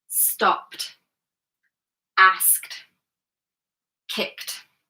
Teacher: if the verb in its infinitive form ends in an unvoiced consonant. The ED ending sounds like tuh.